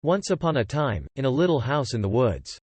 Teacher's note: this sample pauses when it gets to the comma and even trails off a bit when it gets to the ellipsis at the end of the sentence